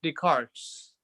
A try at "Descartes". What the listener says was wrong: it's pronounced Descartes. No S's. The S is not pronounced.